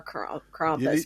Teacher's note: well they kind of roll the r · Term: rolling R